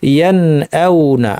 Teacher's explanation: স্বাভাবিক গুন্নায় রেখে আমরা স্বাভাবিকভাবে স্পষ্টভাবে প্রত্যেককে স্বতন্ত্রভাবে নিজ নিজ মাখরাজ থেকে নুন সাকিন এবং হামজা দুইটাকে উচ্চারণ করবো। এটাই হচ্ছে ইজহার।